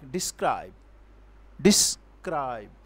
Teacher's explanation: the unstressed syllable followed by stressed syllable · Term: i am